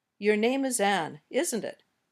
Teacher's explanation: when we use falling intonation we're saying I already know the answer but I'm just double-checking